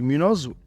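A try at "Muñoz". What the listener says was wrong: Although so many years we know each other, you need to pronounce my surname properly. Yeah, you gotta add the ñ over there.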